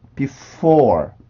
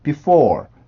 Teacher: F 발음 같은 경우는 마찰음에 해당하기 때문에 내가 강하게 밀어내는 그 공기의 힘이 살아있게 돼요. 그래서 그 소리가 항상 나올 수밖에 없습니다.